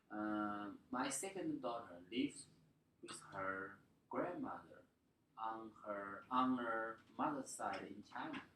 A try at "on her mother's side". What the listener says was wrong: Make sure this is n and not ng. On her mother's side.